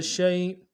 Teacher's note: یائے لین کو بالکل نہیں کھینچتے، نرمی سے پڑھتے ہیں